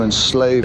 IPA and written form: ɪnˈsleɪv (Enslave)